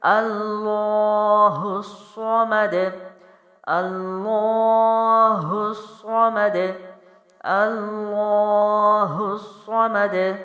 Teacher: ہا جو ہے وہ سینے سے ہوگا، لیکن ہا آگے ملایا جائے گا کیونکہ آگے صاد پر تشدید ہے، تو زور اور جماؤ ہوگا، صاد جو ہے پھر موٹا پڑھا جائے گا · میم ہونٹوں سے پڑی حرکت جلدی چھوڑیں گے، دال جو ہے وہ بھی باؤنس کریں گے کیونکہ پیش ہے تو وہ ختم ہو جائے گی، جزم لگے گا تو باؤنسنگ ہوگی · اللہ کے لام جو ہے موٹے پڑھے جائیں گے، ساتھ لمبے کیے جائیں گے، کیونکہ کھڑا زبر ہے، ایک الف لمبا ہوگا